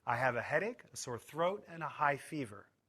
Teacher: Rising intonation shows that the list is not finished we use falling intonation on the last item to show that the list is complete